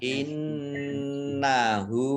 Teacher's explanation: nun tasdid dibaca gunnah atau mendengung, ya, ditahan 2 harokat